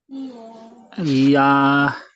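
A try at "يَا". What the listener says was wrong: জি, ইয়া বলবেন না, ইয়া বলে এতটুকু ছেড়ে দেবেন, শেষে হ যোগ করবেন না।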